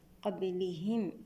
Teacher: قبلهم النون مع القاف إخفاء حقيقي بغنة مفخمة المرتبة الدنيا قبلهم الباء هنا ساكنة شديدة نفك شدتها بالقلقلة